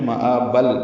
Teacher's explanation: ملانے کی صورت میں مآبل، با کو لام سے ملانا ہوگا، ادغام کامل ہو گئی